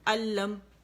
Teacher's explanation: اب نون کی آواز کمپلیٹلی جا کے لام میں چلے گی, جس کی وجہ سے یہ مشدد ہو گیا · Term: ادغام تام بلا غنہ